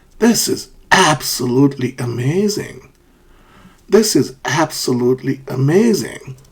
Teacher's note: so that's a rising and falling intonation